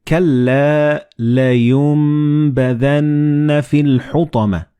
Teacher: So the noon and ba, they will be assimilated together and you will pronounce them as meme.